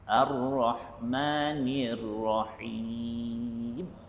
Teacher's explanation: dia mesti ada getaran pada hujung lidah kita ketika mana menyebut huruf ra tersebut